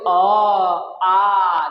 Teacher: Direct कंठ से आवाज निकल रहा है, इसलिए अ आ का उच्चारण स्थान क्या हो जाएगा, कंठ हो जाएगा।